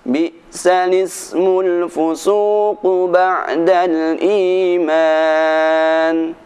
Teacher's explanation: Karena al-ismu ini merupakan hamzah wasal, maka suara i tidak perlu dibaca. Lafadznya berbunyi Bi'sal ismul fusuqu ba'dal iman. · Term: naql